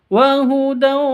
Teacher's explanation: tanwin bertemu dengan wawu, masuk ke wawu disertai dengung, idgham bi gunnah. Wahudau seperti itu, dengung disertai dengung 2 ketuk.